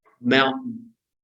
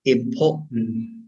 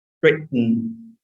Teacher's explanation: Thì cái thanh môn nó sẽ đóng lại và luồng hơi bị nén bên dưới, và sau đó nó bật ra đột ngột. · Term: glottal stop